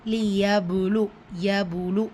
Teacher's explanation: பா சுக்கூன் வசனத்துடைய இடையில் வந்திருக்கு. ஸோ கல்கலத்துல் சுகுரா சிறிதாக அசைச்சு ஓதணும்